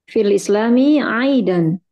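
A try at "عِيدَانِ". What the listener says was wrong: Tapi Anda dengarnya ini ya masih fathah ya. Iya, kasrah.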